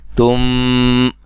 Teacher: نون تنوین کا یہاں ادغام مع الغنہ ہے